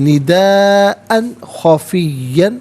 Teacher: निदाअन, हमज़ा पर 2 ज़बर की तरमीन, इसके बाद खा आ रहा है तो यहाँ पर इजहार किया जाएगा, गुन्ना या इख्फा नहीं करेंगे।